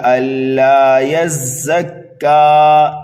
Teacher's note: کاف کو بھی ہم ایک الف کے برابر کھینچیں گے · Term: وقف بالسکون